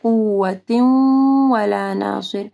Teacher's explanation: تنوین کے بعد جو ہے واو ہے، ادغام آ رہا ہے غنہ کے ساتھ، ولا ناصر، صوت کو ہیوی پڑھنے، ناصر نہیں پڑھنا، صر، صاد۔